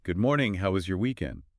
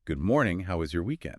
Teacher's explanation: You can say it flat or you can say it with a little lift, a little warmth like you actually want to know. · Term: intonation